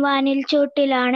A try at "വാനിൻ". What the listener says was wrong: നോക്കൂ, വാനിൽ അല്ല വാനിൻ.